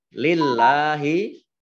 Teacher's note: Ini sama dengan mat tabi'i, panjang 2 harokat. Lillahi, Allahnya dibaca tipis karena huruf depannya khat kasroh.